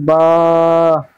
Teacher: দুটো ঠোঁটের ভিজে অংশ হতে উচ্চারিত হবে বা